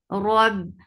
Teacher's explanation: Ba will get sifa of shidda and shidda means cut off this sound abruptly.